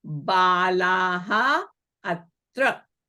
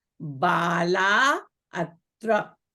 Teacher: now the Balaha ends in long a, followed by the vowel a. So again, the Visarga will be deleted.